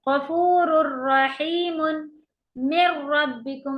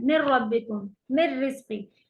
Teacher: गफूरुर रहीमुन मिर रब्बिकुम, आपने देखा कि मी को हम रॉ की तरफ लेके चले गए, कंप्लीट इदगाम कर दिया, बीच का नून पूरा हट गया, और गुन्ना नहीं करेंगे क्योंकि नून पूरा हट गया है